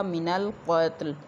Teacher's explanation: قاف موٹا ہے، تا جو ہے یہ ساکن ہے، تا کے اوپر قلقلہ نہیں ہونے دیا جائے گا۔ بعض لوگ قاف کو پر ادا کرتے کرتے تا کے اوپر بھی قلقلہ کر دیتے ہیں، لام کو بھی وقف کی صورت میں ہلا دیتے ہیں، جبکہ لام جو ہے اس کو بھی ہلایا نہیں جائے گا۔